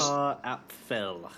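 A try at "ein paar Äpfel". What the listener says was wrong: Apeful. Apeful. Because of the umlaut. plural in German. If it was one apple, it would just be ein Apfel.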